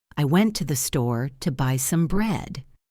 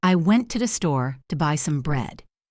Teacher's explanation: The important words, the beats, are went, store, buy, bread.